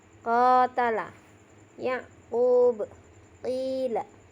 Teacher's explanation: Bunyi huruf qaf dari pangkal lidah dekat dengan kerongkongan pada langit-langit atas